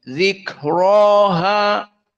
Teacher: ro dalam keadaan fathah mufakamah ditambah dalam keadaan Mad Thobi'i zikroha maka tafhimnya jelas namun di qiraah alqisai sama hukumnya tafhim